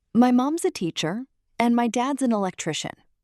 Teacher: Notice mom's, contraction of mom is, said as one smooth unit